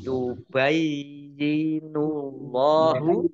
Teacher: Allahnya dibaca tebal karena harokat di depannya dhammah. Lam fathah berdiri mat tobi'i.